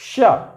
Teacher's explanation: देखिए श, ये जब ये वाला श का उच्चारण करेंगे तो तालु और जीभ के बीच में जगह कम हो जाता है, जिसके वजह से हवा रगड़ खाते हुए निकलता है तो हवा गर्म हो जाता है।